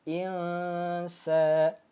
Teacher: dibacanya samar dengung dan ditahan dua harakat atau dua ketukan